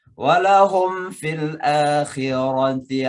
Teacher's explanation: Walahum fil akhirah, mim mati ketemu fa, izhar syafawi